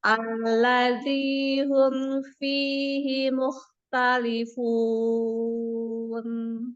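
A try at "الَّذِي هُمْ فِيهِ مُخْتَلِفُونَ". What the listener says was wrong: Humnya di ini kan, di apa? Dhammahnya disempurnakan. Hum.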